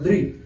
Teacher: द्री द्री बोलते हैं तो जीभ स्पर्श किसको करती है? दांतों को।